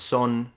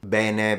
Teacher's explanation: they tend to kind of remove the final vowel a lot